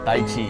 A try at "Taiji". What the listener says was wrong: But it's actually Taiji. Right, with a J.